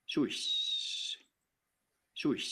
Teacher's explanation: hääliku see peenendusfaas paikneb hääliku algusosas ja lõpp lõdveneb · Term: eelpalatalisatsioon